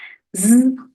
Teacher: folds come together and vibrate as the air passes through